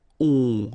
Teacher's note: Okay, so remember, you've got O-M here, but after that you've got a consonant, so it does mean that this combination of O-M will give you the sound on. Okay, you don't pronounce the M at all, so it's really a nasal, so it goes in your nose.